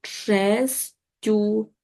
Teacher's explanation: Два приголосних у кінці основи подовження немає.